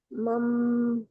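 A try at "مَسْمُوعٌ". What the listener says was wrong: mas. Mas, bukan mam. Mas, masmu'un. Mas, mas.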